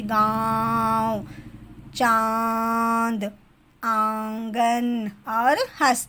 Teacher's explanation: हमारे मुंह और नाक से दोनों से आवाज निकलती है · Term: अनुनासिक